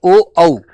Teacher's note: कंठ प्लस ओष्ठ से बोले जाते हैं ओ औ